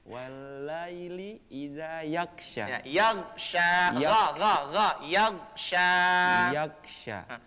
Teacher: Huruf gha itu bukan huruf yang dikalkalahkan atau dipantulkan, cukup ditahan.